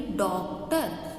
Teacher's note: इसकी जो आवाज़ है वो आ और ओ के बीच की आवाज़ होती है।